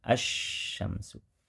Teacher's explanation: lamnya dibaca tak terdengar karena sudah dimasukkan, digabungkan ke huruf depan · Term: idgham syamsiyah